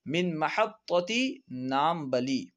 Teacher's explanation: کیونکہ عربی میں پا نہیں آتا اس لیے پا کو با سے بدل دیتے ہیں